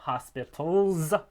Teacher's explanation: the plural s in this case it would be a z because l is voiced so we have hospitals it's forming a noun from a noun · Here, to draw a tree, we have hospital, we have the plural s. In this case, it would be a z because L is voiced.